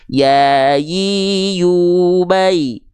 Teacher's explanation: tengah lidah untuk huruf ya itu tidak datar lidahnya, tidak flat ya, tapi dia mengarah, diangkat mengarah ke langit-langit.